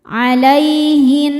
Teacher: Lalu ada hukum alif lam namanya alif lam syamsiyah karena alif lam menghadapi huruf syamsiyah yaitu nun. Cara bacanya alif lam lewat masuk langsung ke nun dimasukkan disebut dengan idgham syamsi